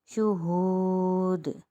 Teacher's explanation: یہاں پر دال ساکن ہو جائے گا، دال حروف قلقلہ میں سے ہے، تو دال پر قلقلہ ہوگا وقف کی صورت میں